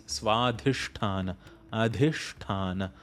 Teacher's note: So it's not Svadhisthana chakra, it is Svadhisthana, Adhisthana. Both dha and tha are Mahaprana sounds.